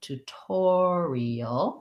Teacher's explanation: stress from the first syllable to the or syllable tutorial and then the t says it's actual aspirated sound because